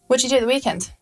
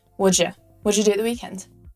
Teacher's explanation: How about, what do you do at the weekend? Hear how do you becomes je again, and at the become very close together. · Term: blending